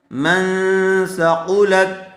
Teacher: نون ساکن کے بعد حروف اخفا میں سے سا آیا ہوا ہے، اس لیے غننے کے ساتھ اخفا ہوگا